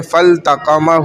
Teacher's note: تو لام ظاہر ہو گیا، فل، لام کی آواز آ گئی